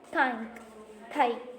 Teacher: the tip of the tongue articulates with the teeth, and then the dental sound is produced. So in this case, the articulation implies a very soft contact between the 2 articulators. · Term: dental sounds